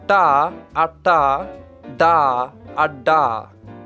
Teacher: We have no retroflex consonants in English. They are formed by curling the tongue back in the mouth and touching the roof of the mouth in the general post-alveolar area. They sound a little like this, da, da, da.